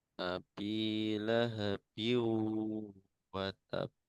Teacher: kasrotain bertemu dengan waw sehingga dibaca dengung ya karena idgham bigunnah